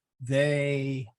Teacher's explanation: like a okay uh if you take the word they um the ey is actually a diphthong in English uh you go they you know it there's a trailing um